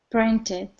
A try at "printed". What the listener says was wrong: Excellent. You hear how she nailed that?